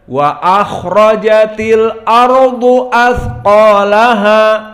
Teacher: Hamzahnya ditahqiq, harus dibaca, tidak boleh dihilangkan. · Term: tahqiq hamzah